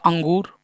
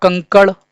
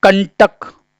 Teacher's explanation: तो ये क्या हैं, ये अनुस्वर हैं और इनका जब हम उच्चारण करते हैं तो नाक से अधिक वायु और मुख से कम वायु निकलती है